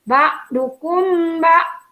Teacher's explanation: mim sukun dibaca samar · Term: ikhfa safawi